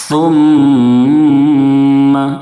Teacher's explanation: سا کو نہایت نرمی سے پڑھیں، سا کی ادائیگی میں سین کی طرح سیٹی جیسی آواز نہ نکلے۔ ثم نہیں پڑھنا ہے، بلکہ ثم، میم کے اوپر تشدید ہے، میم میں غن نہ کریں گے، یعنی ناک میں آواز کو روکیں گے۔